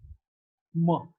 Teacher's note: M is a voiced bilabial nasal.